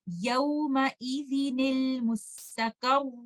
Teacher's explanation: نون ساکنہ جو کہ تنوین میں چھپا ہوا ہے اس کے نیچے کسرہ ڈالیں گے اور اس کو لیٹر لام سے ملا دیں گے